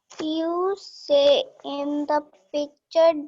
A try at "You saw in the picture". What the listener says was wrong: SAW and SAY. Two words are here. SAY and SAW. SAY means say. SAY and SAW. SAW saw. SAW saw.